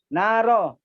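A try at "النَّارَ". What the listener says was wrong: An-naro. Alif lamnya jangan dibuang. An-naro.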